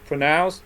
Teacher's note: stress on the second syllable okay again again two two again two okay people one people